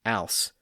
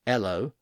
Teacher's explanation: some people in the 1500s and 1600s had a tendency to never pronounce the h sound at the front of words regardless of where they came from.